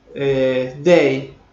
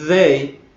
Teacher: una D que es dental y la otra D que es interdental y más fricativa. La primera es oclusiva, ¿ves?